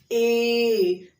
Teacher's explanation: जैसे बोलिए ए, तो देखिए कंठ से भी ये जा रहा है, तालु में भी जा रहा है, ए, तो जीभ तालु के पास जा रहा है, आवाज कंठ से आ रहा है, यानी कंठ और तालु।